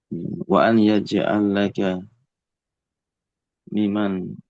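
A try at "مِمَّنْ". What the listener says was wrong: tasydid namanya mimman, pakai tasydid mimnya mimman.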